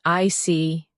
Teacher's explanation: When you show understanding with "I see," your tone drops slightly to show calmness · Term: intonation